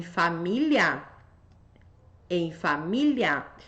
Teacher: tônica na anterior tem ditongo no final